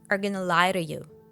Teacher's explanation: The main stress in the sentence falls on the verb lie, so the words before and after it group together around it.